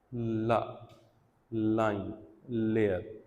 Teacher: tip of the tongue plus एल्वीलर ridge